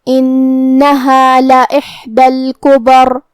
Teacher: کلمت انہا یہاں حرف نون پہ تشدید ہے، لہذا دو حرف کے برابر ہم نون کو پڑھیں گے. کلمت لإحدى لام پہ زبر ہے اور الف کے نیچے زیر ہے، لہذا یہ دونوں حرکات کا دھیان رہے.